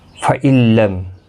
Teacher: نون ساکن کے بعد یرملون کا لام آئے، ادغام ہوگا لیکن گنہ نہیں ہوگا۔ لام اور را بغیر گنہ کے پڑھے جاتے ہیں۔